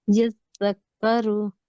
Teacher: जाल के ऊपर काफ के ऊपर दो जगह शद है, तो दोनों को थोड़ा सा शिद्दत के जी साथ पढ़िए।